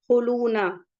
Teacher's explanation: خا حروف مستعلیہ سے ہے اور واو مدہ ہے، 2 کاؤنٹ پڑھیں گے